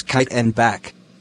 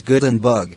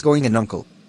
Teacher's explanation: a type of consonant sound produced by obstructing the air flow in the vocal tract with the back of the tongue against the soft part of the roof of the mouth